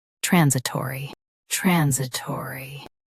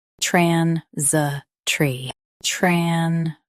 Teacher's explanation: US has taw. UK skips it and goes straight to tree.